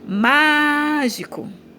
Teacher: Estou chamando mágico. E aí eu demorei também falando mais o má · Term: sílaba tônica